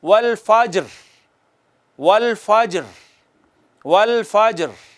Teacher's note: جب زیر والے حرف پر ہم وقف کرتے ہیں تو حرکت معمولی سی فیل ہوتی ہے جیسے پڑھی گئی ہے، پڑھی نہیں جاتی